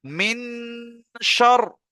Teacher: নাকে তুলে এক আলিফ পরিমাণ গুণনা করতে হবে